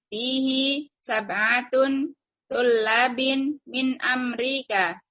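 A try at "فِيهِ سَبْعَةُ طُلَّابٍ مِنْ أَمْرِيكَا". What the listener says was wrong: Tunnya tidak bertanwin Ibu. Karena sab'ah ini bentuk kaidah idhofah. Sab'ah mudoh tidak bertanwin. Sab'atu tullabin.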